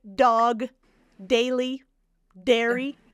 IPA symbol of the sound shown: d